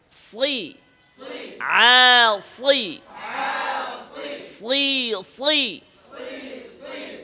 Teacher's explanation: ঠোঁট উপরে উঠবে না গোলও হবে না স্বাভাবিক থাকবে